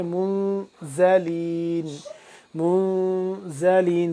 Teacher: ہے اور کیا ہوگا یہاں پہ اخفا کریں گے، منزلین، منزلین، زا کو سختی سے پڑھیں گے ذال سے جدا کر کے